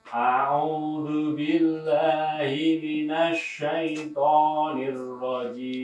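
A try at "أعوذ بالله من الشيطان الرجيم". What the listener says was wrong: Jangan minas, kenapa minas? Mina.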